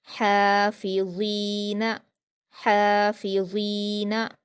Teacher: फ़ा पर हरकतें जल्दी पढ़ेंगे, ज़ा पर या मद्दा है तो इसे 2 हरकत खींचकर नरम आवाज़ के साथ पढ़ेंगे और पुर पढ़ेंगे। नून पर हरकतें जल्दी पढ़ेंगे।